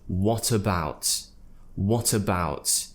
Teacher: T is joining to the schwa sound at the beginning of the next word